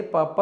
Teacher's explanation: ಓಷ್ಠ್ಯ ಅಂದ್ರೆ ತುಟಿಗಳ ಸಹಾಯದಿಂದ ಉಚ್ಚಾರಣೆ ಮಾಡ್ತಕ್ಕಂತದ್ದು